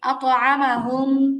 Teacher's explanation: আচ্ছা, তারপরে দেখেন আতআমাহুম, মিম সাকিনের পরে মিম মিম আসছে, সাকিন। মিম সাকিনে ইদগাম, গুন্না সহ মিলায় পড়তে হবে।